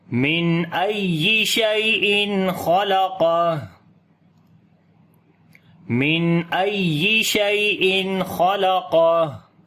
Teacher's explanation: اور یہاں پر پھر ہا کے اوپر سانس جاری کریں گے